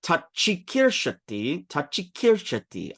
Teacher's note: I make the cha just a little bit longer, and that's how you pronounce the double sound.